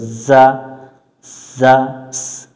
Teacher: যা অক্ষর সামনের নিচের দাঁতের আগা থেকে শীষ দিয়ে পড়তে হয় এখানে লেখা আছে যা কিন্তু আমাদের শীষ দিতে হবে যা এভাবে